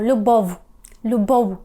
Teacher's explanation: звук тому трішки згадуємо діток і вимовляємо його як у ви щось між в так і у у перехід між у до в не л нічого спільного цей звук з звуком л немає жодному